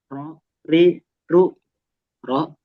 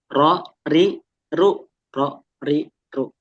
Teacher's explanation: Ro itu yang beda dia kena bagian punggung lidahnya.